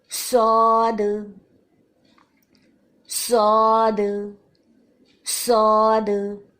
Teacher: صاد کے ساتھ جب الف کی آواز ہے یہ تو موٹی رہے گی